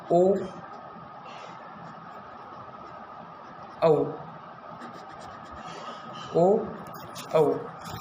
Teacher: देखिए ओ औ का उच्चारण स्थान कहाँ पर है, तो ओ और औ का उच्चारण स्थान है कंठ ओष्ठ